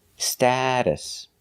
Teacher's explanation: The T in the middle is pronounced like a fast D. Status. The second syllable is pronounced with a relaxed like cup and up.